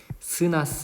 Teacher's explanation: 그래서 스나 스 같은 경우에는 좁은 통로로 공기를 내보내면서 만드는 소리. 그래서 이때 잇몸에서는 마찰음이 형성된다.